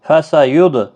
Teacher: دال ساکن پر قلقلہ ہوگا